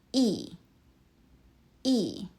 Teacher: Yi uses the fourth tone. Your voice drops.